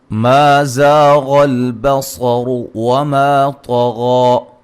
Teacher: الف مدہ، غین کو موٹا، صاد کو موٹا، را کو موٹا، الف مدہ ہے، طا کو موٹا ادا کریں گے، غین کو موٹا ادا کریں گے ساتھ، مد اصلی ہے.